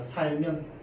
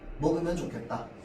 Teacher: 리을 뒤에 면이랑 음연이 붙으면 마찬가지로 으가 발음되지 않습니다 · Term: 으 탈락